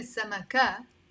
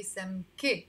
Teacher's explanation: anytime you see words finishing with the kaf right before the te marbuta remember to pronounce the e sound not a